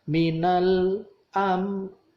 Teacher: Nah, idhar syafawi maka mimnya itu tidak didengungkan tapi Mim dibaca mati langsung lepas. Dua bibir ketemu langsung lepas.